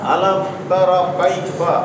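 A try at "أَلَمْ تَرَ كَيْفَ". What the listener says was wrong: জবর উচ্চারণের সময় ঠোঁটটা স্বাভাবিক থাকবে, কেমন গোল হবে না। জবর উচ্চারণের সময় ঠোঁট কেমন থাকবে? স্বাভাবিক। জবরের উচ্চারণের সময় ঠোঁট থাকবে স্বাভাবিক। তাহলে তা খোলা থাকবে, তা, তা, তা।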